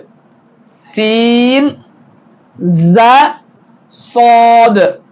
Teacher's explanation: ரா வல்லினமாக சொல்ல வேண்டும் ரா லாம் நூன் ரா அடுத்து சீன் ஜாது நுனினாக்கு கீழ் பல்லின் ஓரத்தில் இணைகிற பொழுது சீன் ஜாது சற்று வல்லினமாக சாதை சொல்ல வேண்டும் சீன் ஜாது இப்படி இந்த மஹ்ரஜிகளை மனனம்